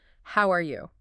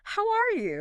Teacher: But then it contrasts this with saying, "How are you?" Using a more friendly, typically rising intonation towards the end.